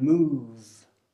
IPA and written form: muːv (move)